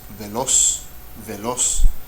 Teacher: so the accented syllable is the last one, which means aguda